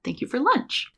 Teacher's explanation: For lunch is getting reduced down to fur. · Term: connected speech